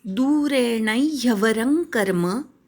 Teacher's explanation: ण वराघात घ्यायचा, दू दीर्घ आहे